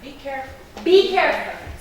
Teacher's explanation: because you're giving a command, by definition, you are definite and you're sure of what you want. So it has to be the falling intonation.